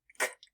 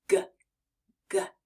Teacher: The G sound as in Goat is made the same way but this time your voice is turned on